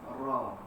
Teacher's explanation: tempat keluarnya apabila hujung lidah bertemu dengan pangkal gigi atas bahagian hadapan tetapi sedikit mendekati lelangit